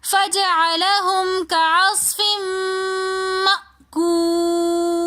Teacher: فجعلہم کعصف میں فا کے نیچے 2 زیر کی تنوین ہے تو 2 زیر کی تنوین کے بعد میم آ رہا ہے، ہم یہاں پر غنہ کر کے پڑھیں گے. کعصف، آگے حمزہ ساکن آ رہا ہے تو اس حمزہ کو ہم جھٹکے سے پڑھیں گے.